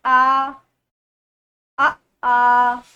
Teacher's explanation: उच्चारण के आधार पर जो मुख गोल नहीं होता है तो उसे बोलते हैं आवृत्तमुखी स्वर